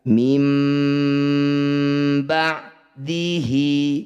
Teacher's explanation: Kita mengganti bunyi nun sakinah dengan bunyi mim sakinah. Jadi, segera tutup bibirmu. Mim. Jangan lupa juga untuk menambahkan efek nasal pada pengucapannya. · Iklab sendiri artinya menukar. Bunyi nun sukun kita tukar dengan mim sukun. Jadi langsung rapat bibirnya. Mim. Jangan lupa didengungkan juga. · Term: iqlab